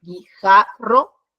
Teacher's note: en la sílaba ja, es donde se pronuncia más fuerte. Entonces, esta es su sílaba tónica.